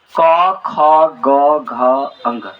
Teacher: कंठ जो होता है, कंठ से उच्चारण होता है अ और आ, और इसके बाद कवर्ग क ख ग घ अंग, इस सभी का उच्चारण स्थान क्या है, कंठ है